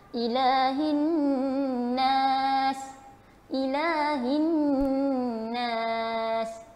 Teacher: Nun yang bersabdu juga, wajib pada dia dengung 2 harakat.